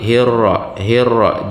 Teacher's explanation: ra-nya bertasydid sedikit, di getarannya cukup 2 kali